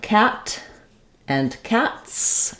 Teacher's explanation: I'm going to have that s that s sound that's because when I say s my voice isn't on there's no vibration here and when I end a word with no vibration it would